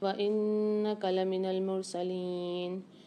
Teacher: تلک آیات اللہ میں اللہ کے لام کو موٹا پڑھیں گے، نتلوها علیک بالحق وَإِنَّكَ لَمِنَ الْمُرْسَلِينَ، وَإِنَّكَ میں نون پر غنہ ہوگا، غنہ کر کے پڑھیں گے